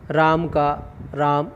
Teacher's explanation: उच्चारण में अंत्य आकार का लोप होने लगा, यानी अंत में जो ए है उसका उच्चारण का लोप होने लगा।